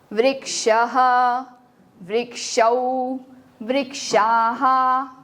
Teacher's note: विसर्ग को ह तो बोलेंगे, बट वो इसके आगे वाली आ की मात्रा का साउंड कैप्चर कर लेगा, सो इट विल बिकम हा